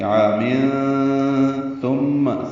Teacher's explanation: میم مشدد پہ غنہ ہے · عامن عین کو 2 حرکات لمبا کریں گے، الف مدہ ہے، تنوین کے بعد ثا آنے کی وجہ سے اخفا کریں گے